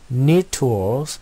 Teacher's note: T 사운드가 overlap 겹쳤죠. 그래서 두 번 하지 않고 neat tools 라고 발음합니다.